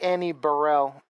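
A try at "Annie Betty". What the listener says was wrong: Drop the L.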